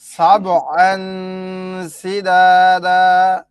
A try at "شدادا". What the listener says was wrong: আবার কয় সিদাদা, এটা কি সি না শিন? وبنينا فوقكم سبعا شدادا।